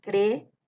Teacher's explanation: Tiene dos vocales abiertas, que es la vocal E y la vocal O. Entonces se separa creo. Este hiato es un hiato de formación simple.